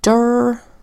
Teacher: usually AR says R but in this case it says herb because it's a schwa at an unstressed syllable